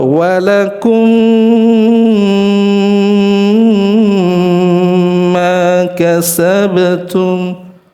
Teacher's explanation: gunnah terlalu panjang, berlebihan, ya, terlalu menikmati gunnah